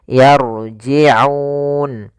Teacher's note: Kemudian pada lafal laun ada bacaan mad arid disukun. Hati-hati juga di sini huruf ain, jangan dibaca yarji'un dengan hamzah, tapi dia ain